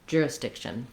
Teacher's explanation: I move up to make the K sound, but then I release right into the SH sound.